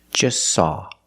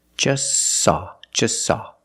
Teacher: We see the T is between consonants, so don't pronounce it. It's silent. Just saw. You link the S with the S.